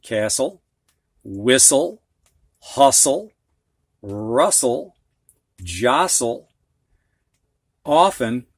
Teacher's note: It's not cast-ul. You don't hear the T.